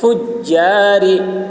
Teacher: را باریک ہوگی